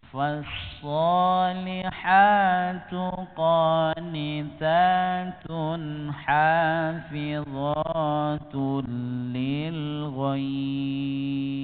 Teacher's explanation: shad kita praktekkan dengan lidah bagian belakang terangkat